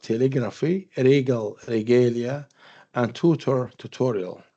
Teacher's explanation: So we notice that the stress changes or moves to the next syllable.